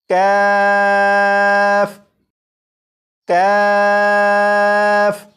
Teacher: اور تالو کا جو سخت حصہ ہے، یہاں پر آپ دیکھیں جہاں پر تالو کا نرم حصہ ہوتا ہے اس سے تھوڑا سا آگے تالو کا سخت حصہ ہوتا ہے۔ تو کاف کا مخرج یہ ہے زبان کی جڑ اور تالو کے سخت حصے سے ادا ہوتا ہے۔ اس حرف کا مخرج تو آپ کو معلوم ہو چکا، اور اس کی صفت یہ ہے کہ اس حرف کو باریک پڑھا جاتا ہے۔